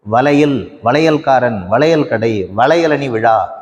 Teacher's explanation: இந்த இரண்டு மாத்திரை அளவுள்ள ஐகாரம் ஒரு சொல்லின் இடையிலே வருகிறபோது ஒரு மாத்திரை அளவினதாக ஒழிக்கிறது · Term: ஐகாரக் குறுக்கம்